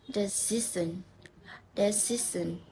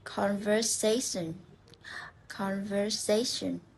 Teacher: We stress in the second last syllable.